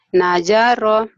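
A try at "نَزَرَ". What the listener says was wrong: nazaro, bukan ja, tapi za.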